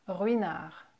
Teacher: you can hear that the first R at the beginning is a little bit stronger and kind of more pronounced than the second one